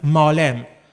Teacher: historically short vowel a is prolonged because of the glottal stop that is omitted, and then you can pronounce it malem, and the a changes to a in the Kandahari dialect.